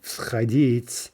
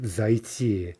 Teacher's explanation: do change the spelling but then with the the perfective right we insert the mobile vowel and so there's no devoicing right in front of the vowel